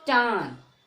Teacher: नाक से भी और गले से भी बोलते हैं तो इसको बोलते हैं चांद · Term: चंद्र बिंदु